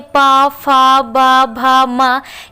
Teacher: ये सभी वर्ड हमारे ओष्ठ्य कहलाते हैं, यानी कि ओठ की सहायता से इनको हम बोलते हैं।